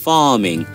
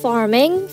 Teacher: যদি মিডলে থাকে, let's say আমরা একটা ওয়ার্ড নিচ্ছি ফার্মিং, এখানে কিন্তু আমি রা উচ্চারণ করিনি. আর আপনারা ব্রিটিশ ইংলিশে দেখতে পাচ্ছেন রা ইজ নট প্রোনাউন্সড